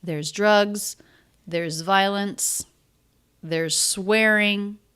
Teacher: And in all three of these utterances, there's drugs, there's violence. The stress is on the thing that's there.